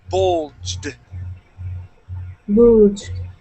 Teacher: give me a D sound. Instead of a T